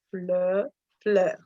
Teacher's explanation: on part du O, et on ouvre un peu plus la bouche, mais vers le bas, ça fait fleur. Parce que floor, c'est en anglais, et on détend, genre floor, fleur, fleur.